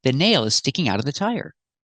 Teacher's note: Sticking out of sounds like sticking outa.